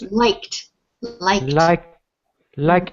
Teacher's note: Now this word like with its ed ending, because the k sound has no voice, it is voiceless, then the ed will sound like a t